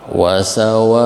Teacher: Nah ini wasawaun, ini yang tadi mad wajib muttasil ya, mad wajib muttasil antara wa itu mad tabi'i ketemu hamzah setelahnya dalam satu kalimat. Sawaun itu satu kalimat, jadi mad wajib muttasil sama 4 harokat.